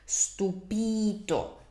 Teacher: in the word for amazed, stupito, where is the stress? It's on the it's on the second to last vowel, which is the I, stupito.